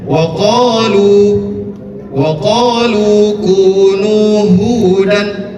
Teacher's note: Sebelum huruf wau, maka didahului dengan huruf yang berharakat dommah. Itu disebut dengan mad thabi'i. Panjangnya dua harakat. Maka cara membacanya waqolu jangan waqolu itu sudah masuk tiga sampai empat harakat.